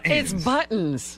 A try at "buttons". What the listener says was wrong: T. You got to say a T.